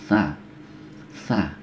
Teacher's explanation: Jadi yang terdengar yang angin yang keluar itu sedikit ya